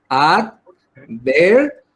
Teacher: Se carga la voz en la penúltima sílaba